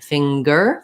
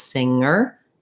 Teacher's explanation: things that ng can do because sometimes they can say like in finger they do say the ng sound and the g sound